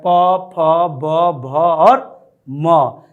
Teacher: डैडी अर्थात ओठ से प वर्ग का उच्चारण होता है, प, फ, ब, भ और म, ये दोनों ओठों के स्पर्श करने से होता है, अतः इसे स्पर्श व्यंजन कहते हैं।